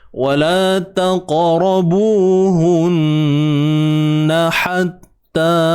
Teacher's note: nun yang bersabdu kena jelaskan dengungnya betul-betul sempurna. Wajibul ghunnah.